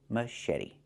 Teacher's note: And then eddy. The T makes a fast D